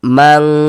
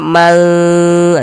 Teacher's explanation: huruf ikhfa hakiki ab'ad ini cara membacanya disamarkan tapi dia lebih condong berbunyi eng